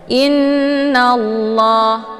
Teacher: Cara bacanya hamzahnya dileburkan ke dalam huruf nun dengan cara ditekan kemudian ditahan sambil didengungkan. Inna, jadi ditahannya itu lebih kurang 2 harokat sehingga terbentuk suara yang mendengung. Innallah, nallah di sini ada alif lam, namanya alif lam asy-syamsiyah karena sesudah alif lam terdapat huruf syamsiyah yaitu la. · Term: ghunnah musyaddadah